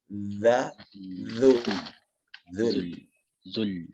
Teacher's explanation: Di sini ada zal ya, zal yang makhrajnya perlu diperbaiki. Dijepit kepada gigi atas za, zul. Zul.